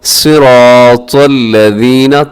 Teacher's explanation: تو کو اپنے موٹا پڑھنا ہے، صاد کو بھی موٹا پڑھنا ہے